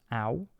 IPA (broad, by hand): au̯